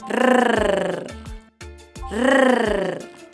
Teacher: try and roll your Rs by replicating the sound of a motorcycle